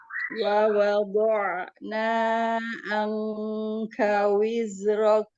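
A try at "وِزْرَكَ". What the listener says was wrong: Ya, jangan wize ya kan? 2 harokat saja, jangan kepanjangan. Coba dilatih ketika kita mengucapkan huruf sukun.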